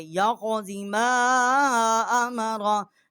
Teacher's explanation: میم الف مد ما چھوٹی مد ہے، 3 الف جتنا آواز جو ہے یہاں بلند کی ہے